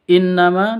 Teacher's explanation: innama Ana Minal [Musik] munzirin innama di sini ada Nun tasdid Nun tasydidnya berdiri sendiri artinya dengung dua ketuk